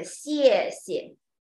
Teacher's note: Neutral tone is pronounced weak and soft. Like a 谢谢, the duplicate words, the second one is become the neutral tone.